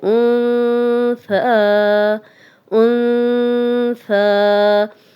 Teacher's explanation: نون ساکن کے بعد ثا ہے تو غنہ کر رہے ہیں ہم۔